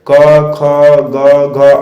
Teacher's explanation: तो गले से उच्चारण करते समय क, ख, ग, घ, अंग स्पर्श होता है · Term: कंठ